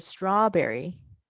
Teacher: But if we listen to the word strawberry, right, strawberry, we hear both the W sound and the B sound as separate, distinct